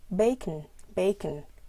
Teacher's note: the schwa, which is a very relaxed vowel, not stressed. It never occurs in stressed syllables, never, because it's very relaxed.